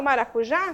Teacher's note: sílaba tônica da palavra é uma oxítona, né, última sílaba, prosódica, e nós vamos ter o acento gráfico por conta de regra também, regra de oxítona terminada em A.